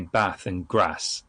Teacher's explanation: I would say bath and grass in the northern style, with a flat A.